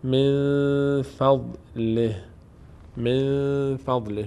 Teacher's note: من فضله نون اخفا میشه اینجا